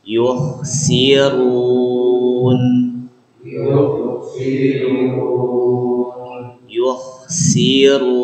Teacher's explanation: ketika membaca k sukun di sini bibirnya jangan ngikut harakat sebelumnya jadi misalkan kalau ngikutkan yirun jadi tetap monyong gitu ya karena